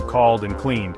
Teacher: In called, the /l/ sound is voiced, and in cleaned, the /n/ sound is voiced, resulting in the /d/ sound for the ed ending.